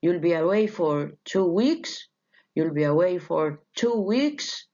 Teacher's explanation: Statement becomes a question by a rising tone.